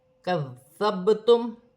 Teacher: با ساکن ہے، حروف قلقلہ میں سے ہے، قلقلہ کے ساتھ ادا کیا جائے گا اور اپنے سے پہلے حرف کی حرکت کے ساتھ ملا کر پڑھا جائے گا، جیسے کذبتم۔